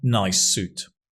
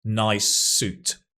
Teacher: There's only one S sound. Nice suit. So you can see they are, if you like, there's a linking of the same sound.